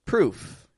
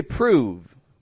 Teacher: The vowel oo is real short, proof.